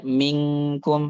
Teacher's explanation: Makhrajnya nun sama makhrajnya huruf ikhfa yaitu kaf gitu. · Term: nun mukhfah